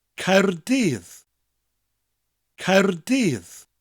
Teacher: Spelled C-A-E-R-D-Y-D-D. The first syllable ends with a rolling R, Caer, and the double D at the end of the second syllable gives us a th sound, dydd.